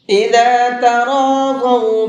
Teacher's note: اس لفظ کے اندر را کو بھی اور ضاد کو بھی دونوں کو منہ بھر کے پڑھیں گے